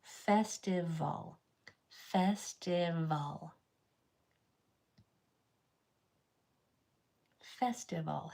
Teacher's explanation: We have top teeth over the bottom lip. It's the same mouth shape as the V, only the V it vibrates. It uses your vocal cords. The F is only blowing.